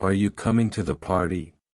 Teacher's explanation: For example, in a question like "Are you coming to the party?" the voice will typically rise at the end, showing it's a yes or no question. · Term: rising and falling intonation, Rising and falling intonation